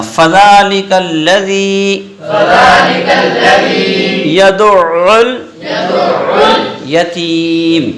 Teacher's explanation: فا کو نہیں کھینچنا، زال کو ایک الف کھینچنا، لام کاف کو نہیں کھینچنا